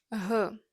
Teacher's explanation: It's a gentle, breathy sound.